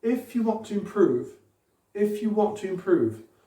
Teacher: Moi, honnêtement, j'entends surtout improve, accentué.